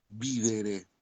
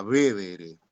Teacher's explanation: La vocal I tónica termina derivando justamente en E